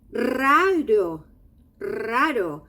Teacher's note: Here we have two R's. Initial R, strong. Middle R, weak.